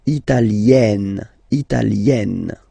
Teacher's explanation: when you get this E followed by a double consonant like here, then you will have to open it